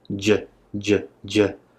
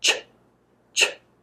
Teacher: just letting out air you'll also notice with j j j this toilet paper will only move slightly but I let out a lot more air with ch ch so it moves quite a bit if you look at the